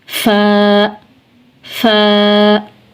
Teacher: फा फा, सनाया उलिया के किनारे यानी ऊपर वाले सामने के जो दो दांत हैं इनके किनारे और निचले होंठ का तर हिस्सा, जब सनाया उलिया के किनारे निचले होंठ के तर हिस्से से मिलते हैं तो फ़ा अदा होता है